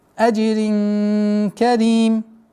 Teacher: ихфа, сокрытие в размере двух огласовок. Назализацию удерживаем.